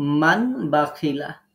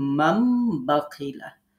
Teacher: এখন আমরা নুনের জায়গায় মিম ধরবো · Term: ইকলাব